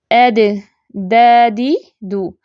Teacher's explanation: जुबान की जो नोक है कदर सख्ती के साथ सनाया उलिया की जड़ों से टकराती है